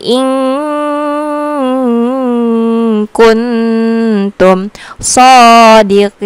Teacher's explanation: Jadi yang bagian in kuntum dan berarti bertemu kaf itu wajib didengungkan karena dia merupakan ikhfa hakiki.